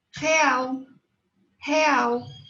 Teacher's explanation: Então, esta L se transforma em U.